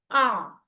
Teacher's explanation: आ यानी पहले हमजा और फिर आइन की साउंड निकालनी है।